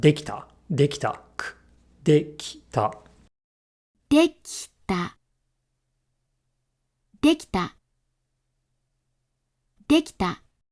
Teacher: this I gets devoiced because T, t, t, is an unvoiced consonant